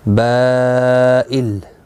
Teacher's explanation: بائل، با حروف مدہ کے بعد حمزہ اصلی آیا ہے یہاں پر ایک ہی کلمے کے اندر، تو یہاں پر مد متصل لگی ہے، 4 الف کی مقدار کے برابر کھینچ کر پڑھیں گے